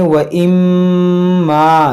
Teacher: میم میں غنہ کریں گے